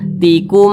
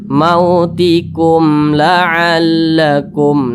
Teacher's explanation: berjumpah huruf lam Nah bukan huruf ba bukan huruf mim Nah maka ini namanya Izhar Syafawi dibaca jelas tidak berdengung jadi dibaca mautikum la'allakum nah jangan dibaca tikum jangan didengungkan seperti